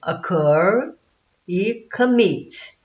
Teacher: Repara que o cur está sublinhado, é a sílaba tônica. Então terminou em sílaba tônica, consoante, vogal, consoante.